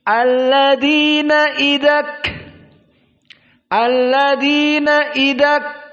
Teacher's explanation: Jadi idak, kafnya tidak boleh keluar suara, baru keluar nafas, karena nafas yang keluar. Idak, maka semua selain dari kaf, semua huruf-huruf hams, juga ta, juga yang lainnya, maka huruf-huruf hams banyak.